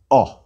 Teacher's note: a short O like the O as in ought, but a shorter, a closed O, as in the British pronunciation of pot.